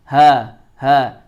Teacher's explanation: huruf ha itu ada pada tenggorokan paling bawah.